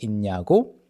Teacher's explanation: it becomes similar to the ㄴ, it becomes one with ㄴ and it becomes [인냐고]